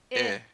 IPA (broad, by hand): ɪ